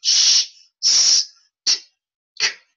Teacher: if you say the consonants, sh, s, t, k, this throat isn't vibrating at all